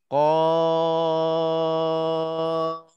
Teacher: Qa bermula dengan qa itu betul-betul pangkal lidah.